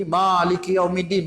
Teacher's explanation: Kita banyak orang Kedah ni banyak bunyi Maliki Yaumiddin. Ma tu jadi berat.